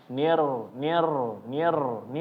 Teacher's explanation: Tapi bacaannya jadi kurang bagus ya kalau di bacaan yang seharusnya fasih. Maka kurangi getaran dari huruf ro ya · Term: at-takrir